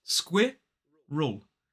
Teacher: So it is sk, and then we have the I sound, squid, and then we voice the R, But the R kind of moves over into the second syllable in front of that schwa, so it becomes squirrel.